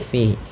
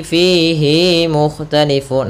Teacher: Hati-hati jangan memanjangkan hi, fihi mukhtalifun. Ada sering terjadi memanjangkan hi-nya.